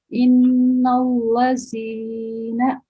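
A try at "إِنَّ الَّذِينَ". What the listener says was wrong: Yes, that's right. Jazakillah.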